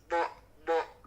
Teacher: Huruf bod dari sisi lidah ya, dari sisi lidah kanan kiri diucapkannya. Nah, supaya gampang itu kita gigit.